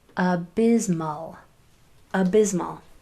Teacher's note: This S is going to make its vibrating sound. · S has a vibrating sound and it will make that vibrating sound. Um especially when the letter before it and the letter after it also vibrate like the W the I vibrates means your vocal cords are used and the M is also a vibrating sound. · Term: z sound